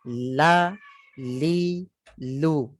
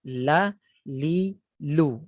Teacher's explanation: Yang tu dilekatkan ataupun diletakkan di hunukil a'la, di lelangin atas belakang gigi tu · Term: lam